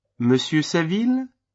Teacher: Note the rising intonation at the end of the name.